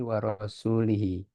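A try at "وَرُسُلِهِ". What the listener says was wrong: Warasu atau warusu? Nah, membedakannya, lihat kalau enggak ada waw, berarti jamak dia, rusul. Ah, karena jamak rasul, rusul. Warusulihi.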